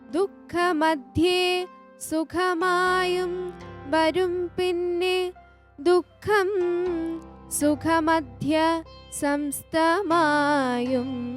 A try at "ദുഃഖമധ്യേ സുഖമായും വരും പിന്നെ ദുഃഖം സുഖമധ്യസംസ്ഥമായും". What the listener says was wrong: ചേർത്ത് പറയണം.